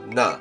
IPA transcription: nə